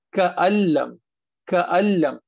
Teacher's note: نون چلا گیا لام میں